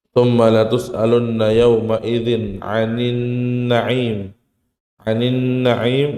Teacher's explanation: maka nun langsung masuk ke huruf nun lagi